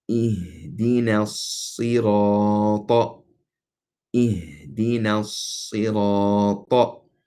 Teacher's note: We elongated the ra because of the alif right before the ra.